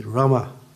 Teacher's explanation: And the A is a guttural, you say Rama. You pull it in